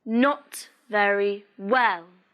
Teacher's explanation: In this sentence, the stress is on not and well.